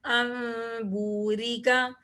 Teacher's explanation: را کے نیچے زیر ہے، اس لیے میں نے اس را کو باریک پڑھا ہے